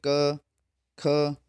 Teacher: ख वर्ग का उच्चारण स्थान जो है वो कंठ है